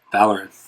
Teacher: the second syllable is AR, so that's a short syllable, which means the stress goes on the first syllable.